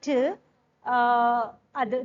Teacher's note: during the production of t, the tip of the tongue is touching the alveolar ridge.